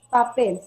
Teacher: Si nosotros pronunciamos esa palabra, la mayor fuerza de voz recae acá en la última, por él he resaltado con rojo. Recae la mayor fuerza de voz en la última sílaba. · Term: aguda